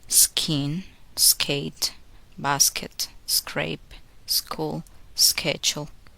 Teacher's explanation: k occurs just after the sound s, there is no puff of air.